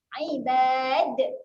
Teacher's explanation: Kita berhenti di sini. Huruf dal ni menjadi lantunan sebab dia menjadi mati kat sini. Kita kena buat lantunan yang besar sedikit.